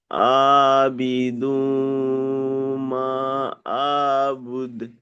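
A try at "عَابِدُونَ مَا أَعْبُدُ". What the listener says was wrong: আবিদু না, নুন ছেড়ে গেল।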